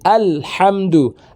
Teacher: Ujung lisan menyentuh gusi atas dekat gigi seri. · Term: lam